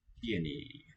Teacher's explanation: Pieni tells you that E takes up a beat as a vowel.